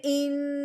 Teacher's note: یہ جو میں نے ان کیا ہے لمبا ہلکا سا، یہ غنہ ہے